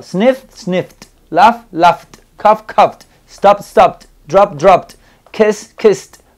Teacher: no le estoy agregando una sílaba extra, ya saben, solamente el sonido T.